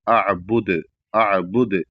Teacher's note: اور اعبد پر جب رکیں گے تو یہاں پر دال پر رک رہے ہیں جو کہ حروف قلقلہ میں سے ہے، تو قلقلہ کے ساتھ رکیں گے